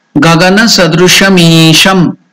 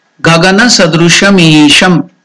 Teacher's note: That isham is elongated dirgha. That's why that sign has been indicated on E, the stroke, to represent that it is dirgha, to unit of time, dvimatra kalam.